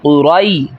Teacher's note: اچھا اس میں بہت بڑی غلطی کی جاتی ہے، قریش، تو یاد رکھیے یہ قریش نہیں ہے بلکہ قاف پیش قو، را یا زبر رئی، قاف کو موٹا کرنا ہے اور را کو بھی موٹا کر کے یا کے ساتھ ملائیں گے، را یا زبر رئی، قرئی، شین دو زیر شن، قریشن۔